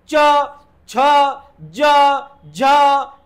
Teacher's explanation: ज्या व्यंजनाचा उच्चार करताना आपल्या जिभेचा शेंडा टाळूला लागतो फक्त आणि फक्त टाळूला तेव्हा त्याला म्हणायचं तालव्य